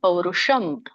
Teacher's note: ಪೌರುಷಂ ಷ ದಲ್ಲಿ ಮೂರ್ಧನಿಷ ಬರುತ್ತೆ ಮಾತಾಜಿ ಪೌರುಷಂ ಶ ಅಲ್ಲ ಸ ಷ ಮತ್ತೆ ಷ ಗೊತ್ತಾಗಲಿ ಮತ್ತೆ ಇದು >>